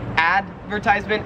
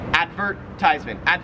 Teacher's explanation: there's more emphasis on the vert part